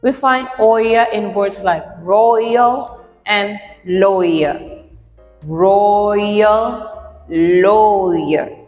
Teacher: And we have the triphthong oi, which comes from oi and schwa, and they form oya.